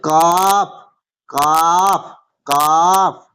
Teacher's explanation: মানে জিভের মাঝখানটা উপরের তালুর সাথে, জিভের মাঝখানটা তার বরাবর উপরের তালুর সাথে লাগিয়ে উচ্চারিত হয়